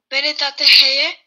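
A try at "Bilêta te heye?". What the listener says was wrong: C'était pas top. Alors, on le rend encore, on met l'intonation à la fin.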